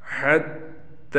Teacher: اس تا کو ایک الف کے برابر کھینچ کر پڑھیں گے